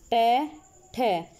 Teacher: मुंह के भीतर का जो अपर पार्ट होता है ना, उसके अगले भाग पे जब जीभ टच होती है ना, तो मूर्धन्य व्यंजन होते हैं